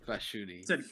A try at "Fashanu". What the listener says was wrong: You said Fashuni, it's Fashanu. There's no E at the end or I.